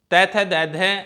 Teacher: तै थ दै ध ये 4 ध्वनियाँ दांतों से बोली जाती हैं